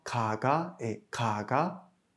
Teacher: Le kiok final de ka n'est pas étouffé puisqu'il est suivi d'une voyelle.